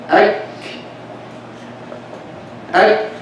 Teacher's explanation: this is a kaf that is sakina, of course that has hams and that has shiddah